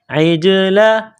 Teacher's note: عین کو جیم کے ساتھ ملائیں گے، جیم کے اوپر قلقلہ کریں گے